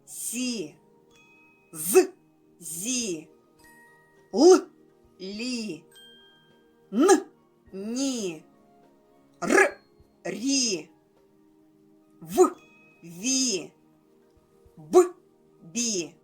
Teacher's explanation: діти як ви помітили усі приголосні звуки пом'якшилися